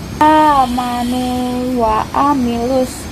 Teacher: Terdapat hukum bacaan tajwid mad tamkin karena sebelum huruf wawu terdapat nun berharokat dumah dan setelah huruf wawu sukun bertemu wawu berharokat fathah. Cara bacanya dipanjangkan 2 harokat.